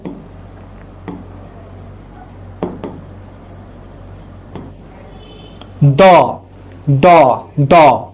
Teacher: দন্ত ধ্বনি, দ, বা অনেক সময় দন্তমূলীয় ধ্বনি বলা হয়